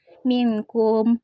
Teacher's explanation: Yang ke-12 minkum. Hukumnya ikhfa karena huruf nun sukun bertemu huruf kaf. Cara membacanya samar dengan dengung